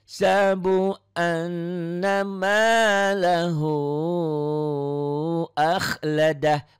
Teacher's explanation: Nunnya bertasydid bukan hanya nyamber dan double kalau ketemu tasydid ini. Tapi ada ditahannya. Ada dengung ke hidung. Itulah gunnah.